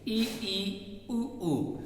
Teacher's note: इनको बोलने पर मुख कम से कम खुलता है, देखिए ई ऊ ऊ, तो इसी वजह से इनको संवृत्त कहते हैं।